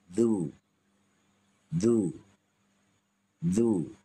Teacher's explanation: Hujung lidah di hujung gigi. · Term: Huruf zal